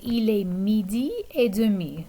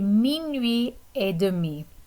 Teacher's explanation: notice that we don't have the E sound on the end of demi